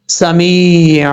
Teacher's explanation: میم کے بعد یا ہے، ایک الف کی مقدار اس کو لمبا کر کے پڑھیں گے کیونکہ یا مد ہے یہاں پہ